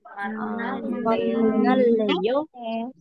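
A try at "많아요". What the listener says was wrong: N-nya nempel. karena ya pun akan beda. Baca yang ini sama baca yang ini beda. N-nya nempel.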